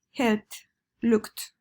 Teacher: van a tener una pronunciación como una T al final